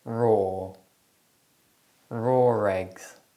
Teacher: when the r sound is inserted to link words that don't contain the letter R it's known as the intrusive R